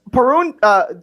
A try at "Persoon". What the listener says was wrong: Persoon. There's an S.